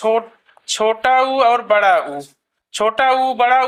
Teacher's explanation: छोटा उ बड़ा ऊ जो है जो है दोनों जो है ओष्ठ से बोले जाते हैं।